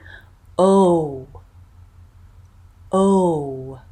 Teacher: we're gonna drop our tongue down a little bit so it's going to be in the middle of our mouth but still in the back tongue lips cheeks tense and lips round and that will be